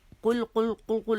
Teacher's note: لام باریک پڑھیں گے, قل قل قل قل, لام موٹی نہیں کریں گے